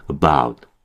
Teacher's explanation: 어 상당히 약화되고 빠른 속도로 발음하셔야 됩니다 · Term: 슈아